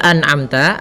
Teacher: Pada lafal anamta ada nun mati bertemu dengan ain. Nah, ini kita namakan dengan bacaan izhar, yaitu suara nunnya harus jelas dan tidak boleh ee ditahan.